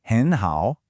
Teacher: Remember that rule, two third tones in a row. It's written with two third tones, but we say it with a rising tone first.